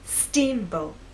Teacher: Now, when you say the word, I want you to think about making the first part at a higher pitch. So our voice will be higher at the beginning and lower in the second part.